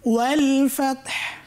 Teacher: শেষে হা, এখানে সাকিন হয়েছে, হাতে বাতাসটা জারি থাকবে